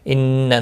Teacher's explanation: ان نون مشدد پر گنہ ہوگا